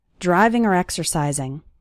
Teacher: when the word or is between two more important words it sounds like er